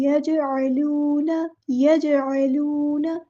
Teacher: वाव मद्दा आ गया तो एक अलिफ के बराबर लंबा करना है